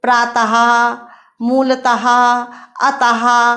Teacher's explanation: विसर्ग का उच्चारण हा के समान होता है।